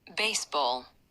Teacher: خب بیسبال بچه ها روی سیلابل اولش هست. سیلابل اولش من بخشای استرس رو یه مقدار exaggerated، یعنی با اغراق بیشتری میخونم که شما بهتر متوجه بشین.